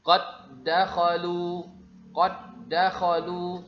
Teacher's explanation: Ya, di sini kita perhatikan ada huruf dal, setelahnya ada juga huruf dal, jadi makhraj sifatnya sama, maka dia diidghamkan. Huruf dal, suara huruf dal pertama langsung dilebur dimasukkan ke dalam huruf dal yang kedua, maka disebut dengan idgham.